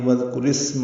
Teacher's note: واو کو ذال سے ملانا ہے، آپ بیچ میں الف نہیں پڑھیں گے، ذال نرمی سے پڑھیں گے، کاف باریک ہے اور اس پہ پیش معروف طریقے سے ادا کریں گے۔